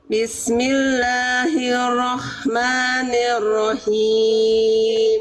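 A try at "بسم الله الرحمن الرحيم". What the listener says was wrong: sekali lagi r-nya ditekan rnya bertasdid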